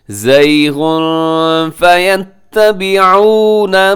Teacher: زَيْغٌ پہ تنوین ہے، تنوین کے بعد فا ہے تو وہاں اخفا کریں گے آپ۔